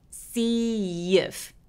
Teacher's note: 앞에 단어가 이라는 소리로 끝났어요. 그리고 뒤에 모음이 따라와요. 이런 경우에는 마찬가지로 이라는 소리 때문에 중간에 y라는 소리가 하나 들어간 것처럼 발음합니다. · 중간에 마치 y가 낀 것처럼 see if 그래서 이라고 소리를 냅니다.